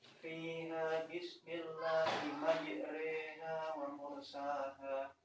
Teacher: Adapun yang dimaksud imalah adalah menyondongkan suara fathah ke dalam kasroh kira-kira 2/3